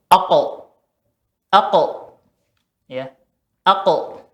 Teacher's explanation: Qaf karena ada sifat isti'la'nya di sifat huruf qaf ini, maka pengucapan qaf ya ketika qalqalah, ketika sukun juga naik belakang lidahnya, seperti aqo ya, aqo, bukan aqo tapi aqo.